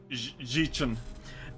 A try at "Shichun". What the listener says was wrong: Chun! There's no J sound. There's no J sound anywhere in there. There's no J anywhere in that name. Shi-chun. The XI is just a sh. Shi-chun.